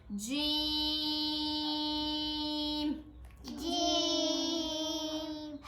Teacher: جیم کو ہم 6 الف کے برابر بھی لمبا کرتے ہیں